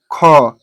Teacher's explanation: ख बोलने पर ऐसा लग रहा है कि ह आ रहा है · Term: महाप्राण